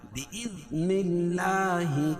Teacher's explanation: اللہ کے لام سے پہلے نون کے نیچے زیر ہے تو اللہ کا لام باریک پڑھا جائے گا